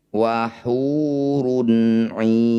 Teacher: Ai panjangkan 6 harokat, huruf terakhir sukunkan. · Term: mad arid lis sukun